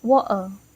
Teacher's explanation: the vocal cords briefly close and then release, creating a small catch or pause in the throat, kind of like the sound in the middle of uh-oh. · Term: glottal stops